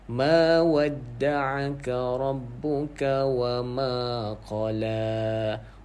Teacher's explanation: ma ni ada mad asli. Okey, jadi kita kena panjangkan dua harakat